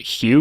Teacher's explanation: most American English speakers pronounce the word “hue” with a palatal fricative